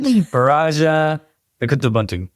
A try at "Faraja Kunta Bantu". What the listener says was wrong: Faraja Kunta Bantu. N is silent.